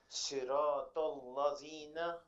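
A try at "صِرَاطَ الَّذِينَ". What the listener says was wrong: So the letter Dhal, the way you pronounce the letter Tha, your tongue, the tip of your tongue will come forward. Dhina, ladhina. No, say Dhal. Okay, the Dhal, it touches the molar teeth, so it will become Siratal ladhina.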